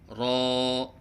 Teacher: نہ اس میں تکرار ہے اور نہ عدم تکرار، بلکہ مشابہ تکرار ہے۔ مشابہ تکرار کا مطلب ہے جیسے کہ آپ تکرار کر رہے ہیں، جیسے را۔